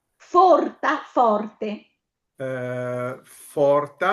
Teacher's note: la O accentata aperta